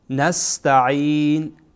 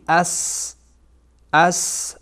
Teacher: شما اگر توجه بکنین هر دو دندانهای بالا و پایین با هم میچسبه، از وسط دندانها صدای خارج میشه مثل صدای صوت. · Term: صفیر